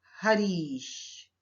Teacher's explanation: हरि शब्द में अंतिम वर्ण है ई और ई शब्द का प्रथम वर्ण है ई। तो ह्रस्व ई और दीर्घ ई मिलकर दीर्घ ई में परिवर्तित हो गए।